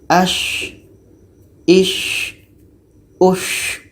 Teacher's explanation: Syim ini letaknya pada tengah-tengah lidah menempel dengan langit-langit mulut.